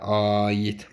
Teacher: A-nın uzanması var. Qalındır, dodaqlanmır. Uzun tələffüs olunur.